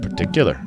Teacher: and the stress is on tick.